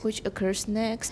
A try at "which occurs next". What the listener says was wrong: All right, if you say which occurs next, then next didn't get any stress, but next is really important here. So we say which occurs next with continuation rise, stress and continuation rise. Which occurs next.